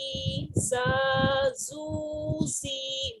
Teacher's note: whistling letter ہے، اس میں وسل ہوتی ہے جب آپ ریڈ کرتے ہیں تو ٹیتھ کی ہارڈ میٹنگ کے ساتھ ہی ریڈ ہوتا ہے